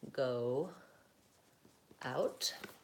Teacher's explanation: if I have to go from an O, which is rounded, to an ow, which is back and open, my lips will round. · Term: light W sound